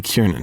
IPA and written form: ˈkɪrnən (Kiernan)